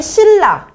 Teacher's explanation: 비음 니은이 앞이나 뒤에 오는 유음 리을의 영향을 받아 유음 리을로 바뀌는 현상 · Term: 유음화